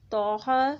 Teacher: تو کے ساتھ جو الف ہے اس کو موٹا پڑھا گیا ہے